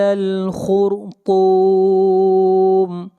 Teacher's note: خا کو موٹا پڑھیں گے، خا حروف مستعلیہ میں سے ہے، خا کے بعد را آ رہا ہے، را ساکن ہے اور را ساکن سے پہلے پیش ہے، اس لیے اس را کو موٹا پڑھا جائے گا۔